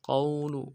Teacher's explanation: کو واو کے ساتھ ملانا ہے، قاف کو موٹا کریں گے، واو لین ہے بغیر کھینچے پڑیں گے ، لام کو نرم سے ادا کریں گے، قول، ویحق القول